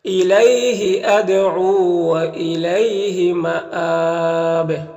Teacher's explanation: یہاں پر حمزہ میں کھڑا زبر ہے، اور اس کے بعد اگر وقف کریں گے یہاں پر تو با کا زیر سکون سے بدل جائے گا، تو با میں قلقلہ ہوگا اور مد عارض وقفی ہوگا، تو اس طرح سے پڑھیں گے الیہ ادعو والیہ مآب۔